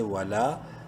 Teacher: ایک الف برابر لمبا کرنا ہے، لام کو کھڑی زبر کی وجہ سے